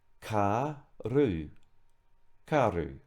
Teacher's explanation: you'll notice that the R has a soft roll